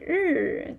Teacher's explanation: when you say 日, you need to roll your tongue, so it's not that not that easy